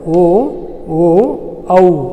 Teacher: ಕಂಠ ಮತ್ತು ಓಷ್ಠ್ಯದ ಸಹಾಯದಿಂದ ಉಚ್ಚರಿಸಲ್ಪಡುವಂಥ ಅಕ್ಷರಗಳು ಕಂಠೌಷ್ಠ್ಯ ಅಕ್ಷರಗಳು